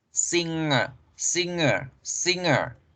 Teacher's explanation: Entonces, singer sí se escribe con G, pero en la pronunciación la G se desaparece y se fusiona con la N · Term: N nasal